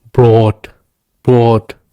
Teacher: in this case you have to say the O for a longer time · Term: long o